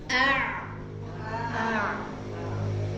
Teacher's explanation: Kalau ain itu masih ada aliran suaranya. A. Jadi nggak langsung putus ya.